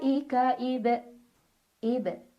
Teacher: yaitu ba yang sukunnya sukun asli dan ada di tengah-tengah bacaan maka cara bacanya dipantulkan tapi pantulannya kecil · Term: Qalqalah sugro